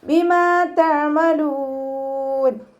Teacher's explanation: മീമിൻ്റെ കൂടെ അലിഫ് മദ് വന്നു. 2 കൗണ്ട് നീട്ടി കൊടുക്കുക. അയനിൻ്റെ സൗണ്ടിനെ തൊണ്ടയുടെ മധ്യഭാഗത്ത് തന്നെ കൊണ്ടുവരിക.